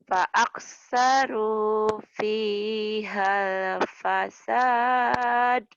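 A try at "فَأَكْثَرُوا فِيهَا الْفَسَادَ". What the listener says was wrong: De-nya nggak keluar kamu. Latihan ya kalau kalanya nggak keluar.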